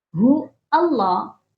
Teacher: اللہ کا جو الف ہے اس کو نہیں پڑھنا